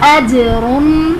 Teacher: जीम हरूफ कलकला में से साकिन है तो इसलिए यहाँ पर कलकला खूब ज़ाहिर करेंगे, और रॉ पर 2 ज़बर की तनवीन है इसलिए रॉ को पुर पढ़ेंगे।